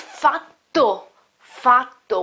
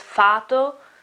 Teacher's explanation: with a double t with the double t so you remember when you have a double consonant it is longer